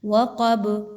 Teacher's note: وقب، again قاف ہے، پر پڑھی جائے گی۔ با جو ہے وہ قطب جد میں سے ہے، قلقلہ کے لیٹرز میں سے ہے، اس لیے اس کو ہلا کے پڑھا جائے گا جزم لگاتے ہوئے۔